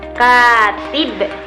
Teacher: Pada kata katib, K-nya itu termasuk suku kata panjang dan tibnya itu termasuk suku kata pendek.